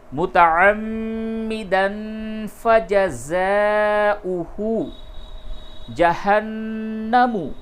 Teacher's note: متعمدا فجزاؤہ جہنم، نون مشدد ہے، غنہ کیجئے